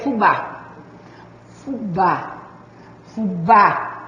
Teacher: a sílaba tônica é o bá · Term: oxítona